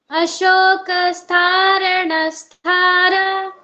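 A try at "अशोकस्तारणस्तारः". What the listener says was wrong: ರಾ ಆದ್ಮೇಲೆ ಣ ಬರ್ಬೇಕು, ಣ ಆದ್ಮೇಲೆ ರಾ ಅಲ್ಲ. ಉಲ್ಟಾ ಮಾಡ್ತಾ ಇದ್ದೀರಾ ಹೇಳೋವಾಗ ಒಟ್ಟಿಗೆ. ಅದ್ ನಿಲ್ಲಿಸಿದಾಗ ಸ್ಥಾರಣ ಅಂತೀರಾ, ಜೊತೆ ಹೇಳುವಾಗ ಸ್ಥಾಣರ ಅಂತೀರಾ.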